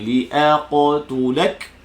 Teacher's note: Hamzah ni mesti kekalkan nipisnya. Qaf tebalkan. Qalqalahnya.